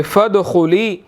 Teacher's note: دال پر قلقلہ ہوگا، خا موٹا ہے، ٹھیک ہے، خا موٹا ہے، اس کو موٹا ادا کرنا ہے.